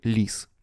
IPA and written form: lʲis (лис)